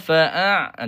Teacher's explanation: huruf ain ni jangan naik ke hidunglah